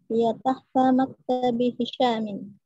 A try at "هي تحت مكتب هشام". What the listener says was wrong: جيد هي تحت مكتب هشام فتح الله عليك